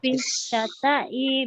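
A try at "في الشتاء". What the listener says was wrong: Ini kalau harokat ininya di bawah tasdid berarti kasroh itu. Fisyita'i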